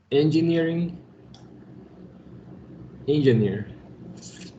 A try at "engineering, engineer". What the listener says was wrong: Un poquito más tenemos que alargarlo, ¿no? Engineering, engineer. Engineering, engineer. Es una IE, tampoco lo van a decir engineer ni tampoco engineer, digamos, ¿no?